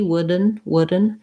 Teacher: from a stopping d into a slab again wooden wooden so i just lift my tongue once make the d sound kind of short and release right into the end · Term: release d